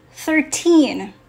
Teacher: in the word 13, the last syllable is the word teen. So it's louder, longer, and clearer. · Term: last syllable stress